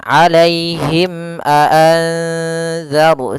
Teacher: hijaiyah kecuali mim dan ba maka dia dinamakan dengan izhar syafawi maka suara mimnya harus jelas dan tidak boleh ditahan